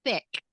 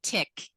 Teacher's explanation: where your tongue is coming between your teeth to make a sound